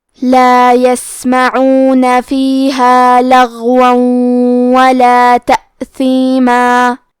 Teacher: کلمت لغون میں حرف الغین ہے، غین کی ادائیگی حلق کے اوپر والے حصے سے ہے، غین حروف التفخیم میں سے ہے تو ہم یہ حرف کو موٹی آواز میں پڑھیں گے۔